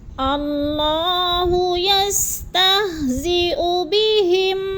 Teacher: اللہ یستہزئ بہم، اللہ کو پر کر کے پڑھیں گے، اور یستہزئ کو لمبا نہیں کرنا کیونکہ پیش ہے اوپر، جلدی جلدی ادا کرنا ہے